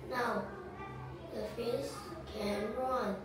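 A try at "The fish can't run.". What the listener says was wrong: Can't. Pronounce your T's as a bit clearer.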